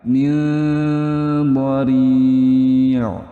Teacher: Nah, panjang ya teman-teman, dan disamar-samarkan karena ada nun sukun bertemu dengan huruf dha, itu hukumnya ikhfa hakiki. Nah, dia samar-samar.